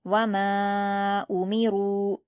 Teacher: اگلی آیت ہے واو پر حرکت جلد پڑھیں گے، میم پر الف مدہ ہے 2 حرکات کھینچ کر پڑھیں گے، اور الف مدہ کے بعد حمزہ دوسرے کلمے میں ہے اس لیے یہاں پر مد منفصل ہوگا اور اس کو 4 حرکات کے برابر کھینچ کر پڑھیں گے